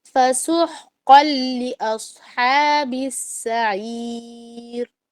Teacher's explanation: فَسُحْقًا میں ہا کو لازم حلق پر لے کے جانا ہے، اور قوف کو آپ لے کر جائیں گے حلق سے، لیکن قوف کو آپ نے موٹا نکالنا ہے ہونٹوں کو گول کر کے.